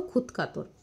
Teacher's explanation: ক খ ত থ বা প ফ এর মতো অঘোষ ধ্বনির প্রভাবে ঘোষ ধ্বনি দ ধ বদলে অঘোষ ত ধ্বনি রূপ নিচ্ছে